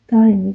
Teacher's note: daimi sözün vurğu, üçüncü hecanın üzərinə düşübdür